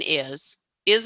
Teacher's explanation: to say okay the the z sound an is is is written with an s but you hear a z